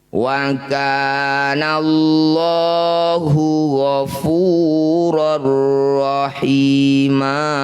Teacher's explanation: Fathah tanwin dihentikan disebut bacaan mat iwat. Bunyi fathah tanwinnya ganti jadi fathah panjang. Panjangnya 2 harokat saja meskipun di akhir ayat. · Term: mad iwad